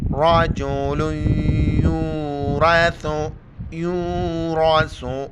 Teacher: را زبر را کے اوپر زبر ہے موٹا کر کے پڑھیں گے